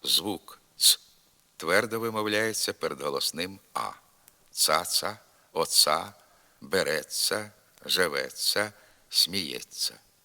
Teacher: у степових говорах зокрема в говірках на захід від Дніпра звук ц твердо вимовляється перед голосним а